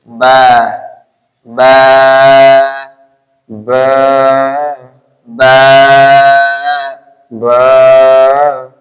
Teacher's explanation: ওয়াও, তাহলে দুই ঠোঁট মিলিয়ে ভিজা জায়গা হতে, দুই উভয় ঠোঁট মিলিয়ে ঠোঁটের ভিজা জায়গা হতে